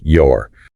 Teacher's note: The possessive pronoun your is often unstressed and can be reduced to a very brief sound, almost like your.